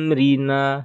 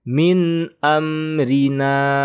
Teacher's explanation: nun sukun bertemu Alif adalah izhar maka dibaca jelas ya tidak dibaca dengung ghunnah ataupun panjang jadi kita membacanya biasa saja Min amrina jangan ditahan Rina salah